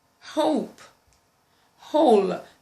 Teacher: Then we have the glottal fricative sound as in hope, whole